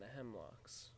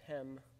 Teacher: notice that it in fact has two syllables rather than three the first syllable is stressed hem and the second syllable is unstressed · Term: Troy